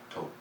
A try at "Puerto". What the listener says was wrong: So the R is before the T. So Puerto.